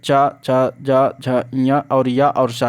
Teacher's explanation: जिन ध्वनियों के उच्चारण में जीभ का मध्य भाग तालु से स्पर्श करता है उसे तालब्य कहते हैं